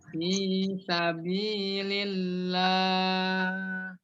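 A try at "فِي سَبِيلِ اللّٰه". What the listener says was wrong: Lillah. Dilatih lagi nggak apa-apa ya. Dilatih lagi untuk pengucapan hak ketika dia sukun di akhir. Ya mungkin jelas, tapi mungkin faktor sinyal kali. Jadi sehingga kurang terlalu jelas.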